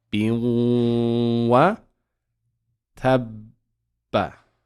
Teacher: we will skip the noon there and go straight to the waw. So instead of saying bin, we'll just say bi and then join it to the waw.